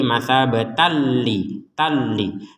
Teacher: tanwinnya bertemu lam dimasukkan tanpa dengungan